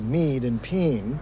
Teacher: A, as in maid and pain, becomes mead and peen, so that snake and sneak can sound the same. So we have a rotation of the whole vowel system, which is happening in different ways in different cities in the United States and in England, too.